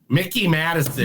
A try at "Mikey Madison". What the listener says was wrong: Madison. It's Mikey. It's Mikey. It's not Mickey. It's Mikey. No, I looked it up. It's Mikey. No, it's not.